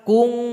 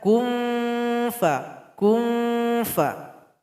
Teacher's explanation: Huruf fa, tempat keluarnya bibir bawah, tempelkan ke ujung gigi seri paling atas. Jadi tempelkan ke sini. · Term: ikhfa awsat